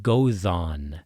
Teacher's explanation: Right in the middle of Góðan we have the eth, which is a voiced th. This is one of the biggest mistakes beginners and people new to learning Icelandic make is devoicing the eth